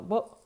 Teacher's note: в датском есть звуки, которые между, то есть это не О и не У